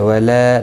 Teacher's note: الف مدہ ہے، ایک الف کی مقدار کے برابر کھینچ کر پڑھیں گے